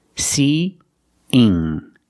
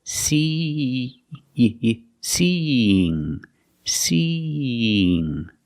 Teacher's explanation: We link these vowels with a y sound. But it's not a very hard y. It's a light y.